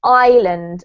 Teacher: actually we don't pronounce the s